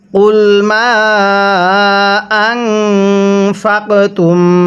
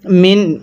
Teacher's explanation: অবশ্যই নুন সাকিনটাকে গুন্নাহ করে পড়তে হবে। তাহলে কুল মা আনফাকতুম, গুন্নাহ করব।